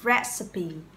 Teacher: Từ này nhìn qua nó có vẻ là chỉ có hai âm tiết thôi, tuy nhiên có ba âm tiết, ok? Và các bạn đánh trọng âm vào âm tiết thứ nhất